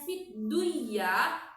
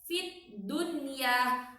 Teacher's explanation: Jadi nun matinya dibaca jelas dan huruf iyanya pun terbaca dengan jelas. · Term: izhar mutlak